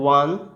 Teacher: ওয়ানের যে উচ্চারণটা সেটা হচ্ছে ও আর আ, এই দুটো উচ্চারণ পাঞ্চ হয়ে আসে